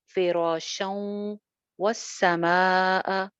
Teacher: शं पे इदगाम हो रहा है, वाव के साथ गुन्ना करेंगे